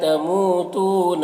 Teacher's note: تموتون مو اور تو دونوں میں واو مدہ ہے، ایک الف کے برابر کھینچیں گے